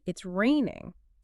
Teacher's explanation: But if your voice goes up at the end, bam, it's a question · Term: intonation